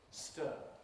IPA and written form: stɜː (stir)